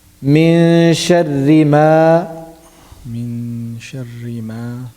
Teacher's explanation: 2 harakat long, because it is mad tabi'i. · Mim fatha alif ma. And alif, mim is pronounced from the lips, and alif is, we'll be considering alif as, we'll be considering alif here as مد.